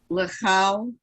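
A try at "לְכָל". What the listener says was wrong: Now remember the rule that I just said about the kaf lamed? Lechol. It's an O.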